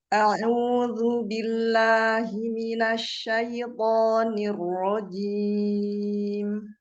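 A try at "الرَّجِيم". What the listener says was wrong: Rojim, jelaskan jimnya. Hati-hati jadi rojim ya. Jimnya jelaskan rojim.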